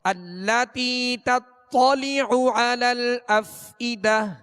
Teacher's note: تا کو باریک پڑھیں گے اور طا کو پر یعنی موٹا پڑھیں گے